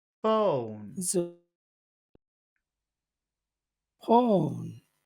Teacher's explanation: go down because it's the end of the phrase so we'll we'll try to to go from high to low in the same word phone